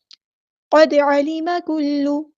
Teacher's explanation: دال ساکن آ گیا تو قلقلہ کریں گے، ہلائیں گے